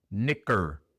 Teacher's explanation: La A entre la C y la R se ignora. Pronunciamos la C y luego la R.